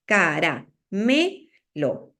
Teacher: en caramelo la fuerza de voz está en me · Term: elemento tónico